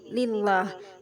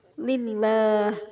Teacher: karena ada lam jalalah lillah didahului kasrah Li lillah cara membacanya lafaz Allah dibaca tipis tarkik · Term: tarqik